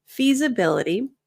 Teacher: The S in feasibility sounds more like a Z. So you'll notice there's a little bit of vibration. So if you're saying feasibility, that's going to sound accented.